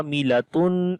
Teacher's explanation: Ain we long due to alif madda